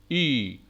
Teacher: So the shape of the lips is not rounded, it is unrounded. It can be described as the front close unrounded vowel.